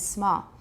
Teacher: don't try to round it too much it'll come out more British which is not bad that's good small small is